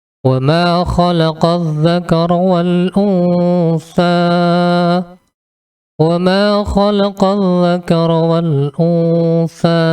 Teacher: Jadi samar-samarnya adalah antara nun dan sa. Ketika kita membaca nun mati ini secara samar-samar, maka mulut kita sudah bersiap-siap untuk mengeluarkan huruf sa sesuai dengan makhraj hurufnya. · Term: ikhfa